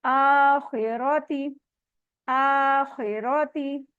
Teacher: खा हैवी है, रॉ के ऊपर जबर है, वो भी हैवी है। तौगीना, तौगीना, और हैवी भी है और 2 काउंट स्ट्रेच भी होगा।